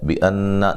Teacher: بِأَنَّ نون مشدد پہ غنہ ضروری ہے